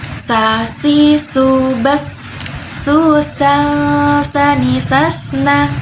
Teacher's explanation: Jadi huruf sa ini hamash atau mengalir nafasnya. As itu bisa kita rasakan ada udara yang keluar, itu berarti mengalir nafasnya.